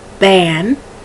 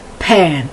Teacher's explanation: in english the b and the p are made in the same area but one is it's called aspirated and unaspirated or not aspirated